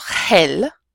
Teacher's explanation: the word is going to be pronounced with a soft h sound